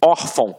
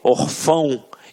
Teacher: reparem que a sílaba tônica está na penúltima sílaba. Por isso é uma paroxítona.